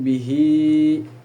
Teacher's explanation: terdapat ha domir atau bisa disebut silah, maka hukum bacaannya adalah mad silah qasiroh yang panjangnya 2 harakat